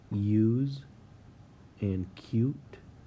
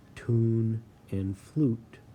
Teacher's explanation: there is a slight difference in the long U sound in use and cute, where the vowel says its name U, and that is different from tune and flute, where the vowel sound is oo. Still long, but you have that U versus oo.